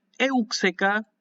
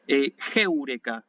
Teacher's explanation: Y acá tiene la comita, van a ver que es espíritu suave, por eso yo la leo sin aspiración